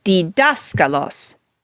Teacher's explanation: to so let's break this down a moment for dascal Los the accent is two syllables from the end · the accent is two syllables from the end on the syllable that we call the antepenult